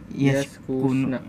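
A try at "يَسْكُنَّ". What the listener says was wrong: ya, hiya yaskunna ya, ada double n jadi tasdid ya. Hunna yaskunna ya, agak susah memang ya. Ya agak kagok ya, yaskunna.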